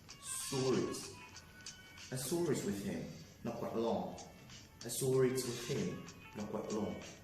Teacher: This means that words that you have and you want to add you want to intrude it with the R. The R is not in the spelling. You want to intrude it there. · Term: Intrusive R